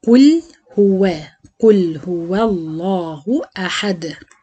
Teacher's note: فهنا اللام مفخمة عشان الواو عليها فتحة. وراعي وانا بوصل الواو المرققة باللام مفخمش الواو.